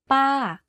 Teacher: in order to be able to fall to say this tone focus on pitching your voice to go slightly up first and then to fall down at the end of the syllable · you can hear from my voice that my pitch went up and then down very slightly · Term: falling tone